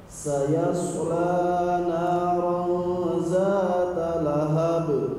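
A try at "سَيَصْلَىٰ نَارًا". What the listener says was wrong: Oke, la-nya kepanjangan. Sayasla naran, la naran gitu.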